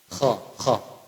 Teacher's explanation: Pangkal tenggorokan itu namanya makhraj huruf kha.